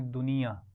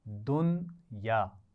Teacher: فی الحیات الدنیا. اچھا اردو میں ہم اس کو پڑھتے ہیں دنیا, نون کے نیچے زیر پڑھتے ہیں نا, لیکن یہاں پر آپ دیکھ رہے ہیں نون پر جزم ہے